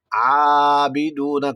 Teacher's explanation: عابدون کھڑا زبر ہے، الف مدہ کی آواز دے دے گا